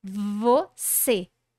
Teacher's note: Você sai de um movimento de lábio inferior encontrando os dentes superiores para C e vai para o movimento de retração.